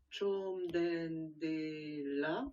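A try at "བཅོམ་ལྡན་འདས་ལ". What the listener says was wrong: Impeccable.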